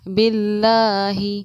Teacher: لفظ اللہ کے لام سے پہلے زیر ہے تو لفظ اللہ کے لام کو ہم باریک پڑھیں گے،